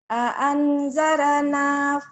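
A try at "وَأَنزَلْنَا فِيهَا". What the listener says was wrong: Kenapa wa anzar? Bukan R tapi L. Lala lili lulu bukan R.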